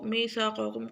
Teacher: پہلا قاف موٹا دوسرا باریک